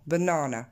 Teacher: Si vous regardez le mot en blanc, banana, donc je vous avais souligné l'accent tonique qui tombe sur du coup la deuxième syllabe, mais je vous ai aussi rajouté le petit tiret devant, la petite apostrophe devant, banana.